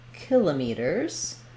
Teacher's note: to stress it on the first syllable, and that sounds like kilometers.